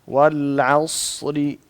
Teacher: جب آپ صاد کو پڑھتے ہیں ایک تو اس کو موٹا کریں عص، اور دوسرا جب اس کو پڑھتے ہیں تو ہلائیں مت،